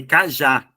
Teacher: cajá é uma dissílaba só que a última sílaba é a mais forte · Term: oxítona